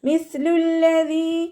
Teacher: മിസ്ലുല്ലദീ, സ ലൈറ്റാക്കിയിട്ട് ഉച്ചരിക്കേണ്ട അക്ഷരങ്ങൾ പെട്ടതാണ്. നമ്മുടെ നാവിൻ്റെ അറ്റവും മേലെ മുൻപല്ലിൻ്റെ അറ്റവും ചേർന്നിട്ടാണ് സ പുറപ്പെടുന്നത്. നാവിൻ്റെ കുറച്ച് ഭാഗം പുറത്തോട്ട് കാണുന്ന രൂപത്തിൽ വെക്കുകയും ചെയ്യുക.